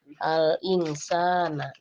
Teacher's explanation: Membaca yang benar dengan cara samar dan mendengung